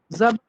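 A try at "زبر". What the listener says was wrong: ये जबर. आपका आखिरी साउंड नहीं आई मेरे. सब पे जबर है ना, ना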